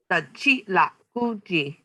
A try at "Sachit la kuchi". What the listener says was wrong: Yeah, that's good.